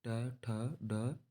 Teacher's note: ट वर्ग के अंदर ट, ठ, ड, ढ, ण, इनको हम मूर्धन्य, मूर्धा की सहायता से हम बोलते हैं